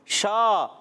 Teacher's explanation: شین کے اندر ایک صفت پائی جاتی ہے، اس صفت کا نام ہے تفشی، یعنی منہ میں آواز کا پھیل جانا · शा یہ بھی الف مدہ ہے، ایک الف کھیننا ہے۔ شین ادا ہوتا ہے زبان کے درمیان، تالو کے درمیان سے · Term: حروف شجریہ